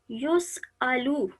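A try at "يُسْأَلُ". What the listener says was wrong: یہ لو لمبا بھی، اب آپ نے لو تھوڑا سا لمبا ہو گیا، یسألو،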